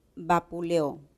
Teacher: Aquí hay un hiato simple, la E y la O. Y la sílaba tónica es la O, por eso acentuamos.